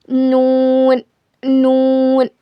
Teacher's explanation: जबान के किनारे को सामने के 4 दांतों के मसूड़ों में लगाने से नून अदा होता है। It is pronounced when the एज of your tongue touch the gums of your fourth of front teeth.